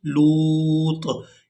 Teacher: لام کو واو مدہ کی وجہ سے کھینچتے ہوئے طا ساکن کے ساتھ ملائیں گے، لام واو طا پیش لوط.